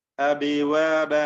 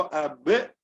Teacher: ചുണ്ടുകൾ ചേർന്ന് പിന്നെ ആ ശബ്ദം ഇങ്ങനെ വേർപിരിഞ്ഞുകൊണ്ടാണ് നമ്മൾ ഉച്ചരിക്കുന്നത് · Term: ഖൽഖല